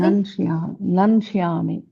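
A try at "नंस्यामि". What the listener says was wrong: శ్యామి. ష్యా కాదు, శ్యామి. మళ్ళీ చెప్పండి.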